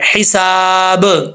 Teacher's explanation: سین کے آگے الف ہے تو اس کو لمبا کریں گے